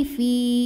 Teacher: Wa ma fi jika berhenti di fi hukumnya adalah mad tabi'i karena huruf ini adalah huruf mad ya sukun. Ya sukun didahului kasrah, maka panjang fi-nya 2 harokat. Nah, namun dibaca panjangnya hanya saat berhenti fi.